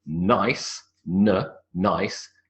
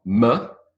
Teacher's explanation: The tip of the tongue sits on the alveolar ridge and you make a n sound. So if you say the word nice, n, nice, the n sound starts with the tongue on the alveolar ridge, n.